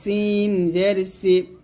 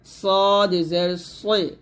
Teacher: এখানে সিন জের সি পাতলা, এটা হবে সদ জের সই মোটা